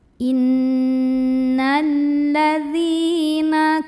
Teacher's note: dzal yang kasrah kita bunyikan panjang 2 harokat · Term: madhabi'i